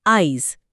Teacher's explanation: আজি শব্দটা আমরা অনেক সময় উচ্চারণ করি আইজ, ওই ইটা জের আগে চলে এলো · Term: অপিনিহিতি